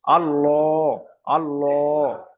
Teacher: মুখটা একটু গোল হয়ে যাচ্ছে। এটা হলো পুর।